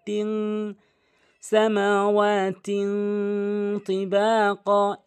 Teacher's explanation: আর এখানে যে ভুলটি করে সেটি হচ্ছে সামাওয়াতিন বলে, এখানে ইকফা করে বলতে হবে, নাকের ভিতর নিয়ে পড়তে হবে তিন। সামাওয়াতিন তিবাকা, ইকফা গুন্না এটি।